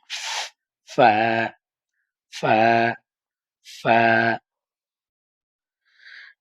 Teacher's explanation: নিচের ঠোঁটের পেট ধরেন, নিচের ঠোঁটের পেটটা ধরেন। ধইরা সামনের উপরের ২ দাঁতের আগার সাথে লাগান। ২ টা দাঁত নিচের ঠোঁটের পেটের সাথে লাগাই বলেন ফা, ফা, ফা। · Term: ফা এর মাখরাজ